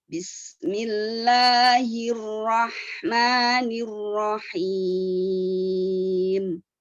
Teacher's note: La sama ma itu harus lebih pendek dari him.